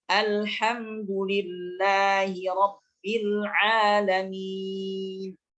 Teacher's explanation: lam ta'arif dibaca izhar, yaitu membaca lam sukun dengan jelas